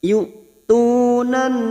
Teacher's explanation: Fa idzalla kita uraikan dari kata yu'tunan karena sekarang kita wasol maka huruf nun masuk pada huruf nun di sini alif lam samsiah. Yu'tunan masuk pada huruf nun dan ditahan selama 3 harokat kita dengungkan